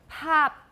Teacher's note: Pop. But when it's the last sound in the word, we often don't explode it, we don't release the stop, so we have pop.